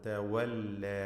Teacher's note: മലയാളത്തിലെ വാ പറയരുത്, രണ്ട് ചുണ്ടുകൾ ചേർത്തുകൊണ്ട്